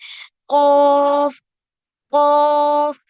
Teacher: इसमें क्या करना है, हमें जबान की जड़ को छोटी जबान के हिस्से से लगाना है। ठीक है, यानी सॉफ्ट पैलेट पे लगाना है, तो हमारा साउंड जो होगा वो अपने आप हैवी होगा। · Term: हैवी साउंड